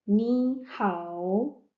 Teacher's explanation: when you read the dyslabic words together so the first first word tone will become the second tone and the second word tone will remain the N. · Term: third tone